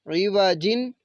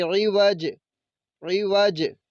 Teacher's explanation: تو وقف کریں گے تو اس کو ہم نے پڑھنا ہے بارارہ، عین زیر عی، وا زبر وا، عیوا، جیم دو زیر جن، عیوا جن، عیوا جن۔ تو وقف کریں گے تو پھر ہم نے جیم کو ساکن کرنا ہے، پڑھیں گے عیوج، عیوج۔